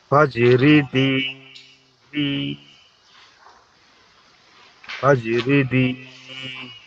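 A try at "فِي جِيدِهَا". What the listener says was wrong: ফি জিদিনি, ফি জিদি, ফি জিদি, এখানে ফাইয়াজের ফি হবে, জিমিয়াজের জি, এখানে দুইটাতেই টান হবে, ফিতে এবং জিতে। ফি জিদি,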